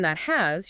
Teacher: You get your tongue in position to make the T sound tip of the tongue right behind your top teeth. Okay? But you just don't release the puff of air. · your tongue goes up for the T, but then you move right into the H of has without the two sounds. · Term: stop T